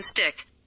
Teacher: an alveolar plosive, T, in stick